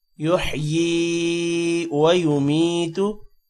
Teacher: یا کے بعد یا آ رہا ہے، تھوڑا سا لمبا کریں گے